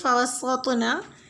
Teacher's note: آیت نمبر 5 میں فَوَسَّطْنَا طا ساکن ہے، اس پہ بھی قلقلہ کریں گے